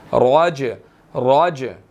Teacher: जीम हरूफ कलकला में से है, साकिन हो गया तो यहाँ पर इसको हिलाकर पढ़ना है